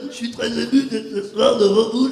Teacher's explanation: il utilise deux vibrateurs, c'est-à-dire ses cordes vocales et ses bandes ventriculaires pour donner cette espèce de son.